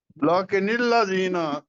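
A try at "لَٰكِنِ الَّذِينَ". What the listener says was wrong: نہیں، اس کو لا کے نہیں نا کہنا، اس کو کہنا ہے لاکن الذین، لاکن الذین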